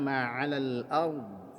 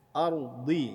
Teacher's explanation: ra-nya tebal karena ra-nya sukun didahului oleh huruf yang dibaca fathah.